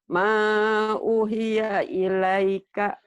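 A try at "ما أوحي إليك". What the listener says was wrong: O-nya panjang. Ma'uhiya ilaika. Ilaika.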